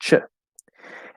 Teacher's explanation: the CH sound is a combination of T plus SH. You just go here, you push the SH through the T, you get ch.